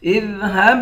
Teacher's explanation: ہا کو با کے ساتھ ملا کر با پر قلقلہ کریں گے